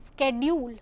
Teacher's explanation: American English pronounces the sound sk at the beginning of the word schedule